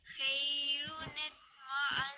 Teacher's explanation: good emphasis on the noon because of the tashdid